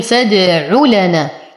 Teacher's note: ننتقل من ضمة العين إلى فتحة اللام بدون إعطاء مدة لهذه الضمة، فنقول فادعوا لنا.